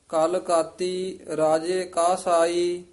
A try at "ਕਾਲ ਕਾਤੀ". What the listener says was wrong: ਕਾਲ ਕਾਤੀ, ਇਹਨੂੰ ਕਾਲ ਪੋਲਾ ਹੀ ਉਚਾਰਨ ਕਰਨਾ ਹੈ। ਕਾਲ ਕਾਤੀ ਰਾਜੇ ਕਾਸਾਈ। ਕਸਾਈ ਨਹੀਂ ਕਹਿ ਦੇਣਾ, ਕਾਸਾਈ ਇਕੱਠਾ ਹੀ ਉਚਾਰਨ ਕਰਨਾ ਹੈ।